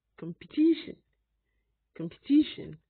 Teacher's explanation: whichever way primary stress is on the third syllable so first level is come second syllable can be pronounced either